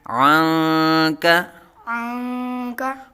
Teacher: عنک، عنک، عین کو حلق کے درمیان سے ادا کریں گے، نون ساکن کے بعد حروف اخفا میں سے کاف آ رہا ہے تو یہاں اخفا کا قاعدہ ہوگا، یعنی نون ساکن میں غنہ کریں گے